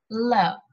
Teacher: the tip of our tongue, it is touching the alveolar ridge and air escapes from the sides of the tongue. L, you try to slowly pronounce L. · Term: laterals